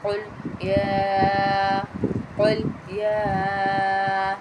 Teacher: قل قاف کو پھر موٹا پڑھیں گے ہم، کل نہیں کہیں گے، قل. قاف کو حلق سے نکالیں گے